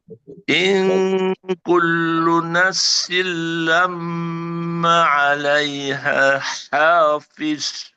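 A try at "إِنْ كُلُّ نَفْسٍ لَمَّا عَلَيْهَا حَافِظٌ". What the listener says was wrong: Oke, maknya tinggal maknya Bu ya. Ma panjang. M, maknya panjang.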